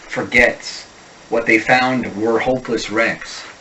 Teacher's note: In a typical American accent, even R endings are articulated